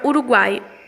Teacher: são três vogais que se encontraram formando um tritongo